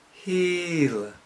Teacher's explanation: the tongue is very high the front of the tongue is up towards the hard palate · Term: vowel e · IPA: [hi:l]